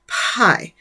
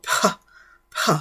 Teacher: it was pronounced with a little bit of breathiness. That's not a word, but a little bit more breath.